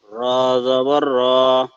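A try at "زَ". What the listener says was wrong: আচ্ছা, এটা র না, এটা হবে ঝা। এটা হবে ঝা। ঝা জবর ঝা।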